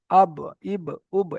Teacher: আম তারপরে দেখেন বা দ্বিতীয় যে মাখরাজটা আছে 16 নম্বরে বা এই বায়ের সম্পর্ক ঠোটের সঙ্গে দুই ঠোটের ভিজে অংশ থেকে উচ্চারিত হয় বা